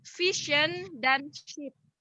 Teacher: suara yang terbentuk oleh lidah melengkung di belakang punggung alveolar. Jadi lidahnya kita itu tuh melengkung di kayak agak ke belakang langit-langit lidah kita. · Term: pasca alveolar